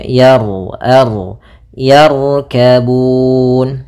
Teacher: Ma ada Mad thii yaitu fathah bertemu Alif yarkabun di sini ada huruf ro tebal maka rnya kita tebalkan